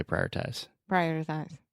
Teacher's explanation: That's one of those words with a lot of R's that you can kind of don't really have to pronounce all the R's. You don't have to say prioritize.